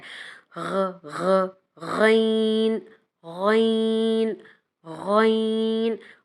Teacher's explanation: غین کا مخرج ہے ہمارے حلق کے اپر پارٹ سے ادا ہوتا ہے اور جیسے ہم نیم گرم پانی کے غرارے کریں تو جو آواز پیدا ہوتی ہے وہی غین کا مخرج ہے۔